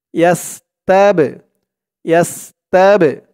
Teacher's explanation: কলকলার হরফ, ধাক্কা দিয়ে পড়তে হবে।